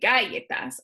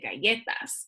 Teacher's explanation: It's that second to last syllable that just gets the accent when I pronounce it.